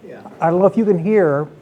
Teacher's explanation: Her voice is quite soft and quite low. That's a Parkinson type of voice. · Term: vocal hypophonia